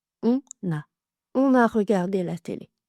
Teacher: on a regardé la télé avec une liaison on entre on et a, une liaison en n. On fait toujours la liaison en n quand on est sujet.